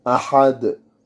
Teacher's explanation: Et parce qu'on s'arrête sur lui. Ahad, on doit rebondir sur le del pour qu'on l'entende quand on s'arrête. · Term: qalqala